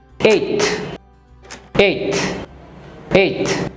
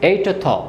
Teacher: ঠ এবং থ, ঠ উচ্চারণ করে সাথে সাথেই থ উচ্চারণের সাথে মিশে যাবে।